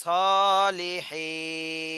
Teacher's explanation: সলিহিন দেখেন এটা হলো মদের হরফ জের বামে জজমে মদের হরফ মদের হরফের বামে ওয়াকফ হচ্ছে এজন্য তিন আলিফ টান দিতে হবে